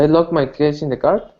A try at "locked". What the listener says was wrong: Yeah, locked. So yeah, we don't have the ED sound, it's just the T, locked. Those ED endings are tricky, but hold on.